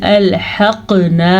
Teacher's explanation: आइन और हा ये दोनों एक ही जगह से निकलते हैं, यानी कि हलक के दरमियान वाले हिस्से से